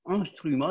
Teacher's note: quand un Français dit instrument, il commence à arrondir les lèvres dès le début